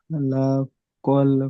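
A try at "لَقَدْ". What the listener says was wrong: লাকাদ, লাকাদ, ওখানে দা লাম নয়।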